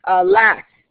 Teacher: That's a two-syllable foot of poetry, okay, with the stress falling on the second syllable. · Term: iams